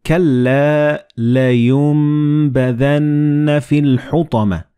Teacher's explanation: the noon and ba, when they follow one another in the same word, you don't pronounce noon, but you pronounce meem.